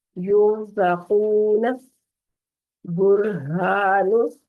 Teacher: اب را ساکن ہے اور اس سے پیچھے پیش ہے تو اس صورت میں بھی را کو پور پڑیں گے